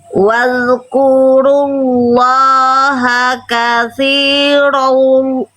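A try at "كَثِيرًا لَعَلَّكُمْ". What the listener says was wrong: Nggak ada wawunya Bunda. Langsung tuh. Langsung masuk ke lamnya. Nggak ada huruf waw. Bukan kathirol. Langsung ke lam. Lebur. Katsiran la'allahum.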